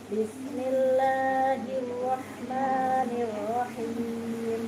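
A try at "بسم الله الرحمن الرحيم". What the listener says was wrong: Kelebihan kepanjangan dikit. Lagi.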